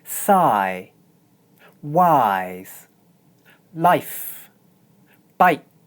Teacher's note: for the first two words, I pronounce the diphthong long, and for the second two words, I pronounce it short. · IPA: /ʌɪ/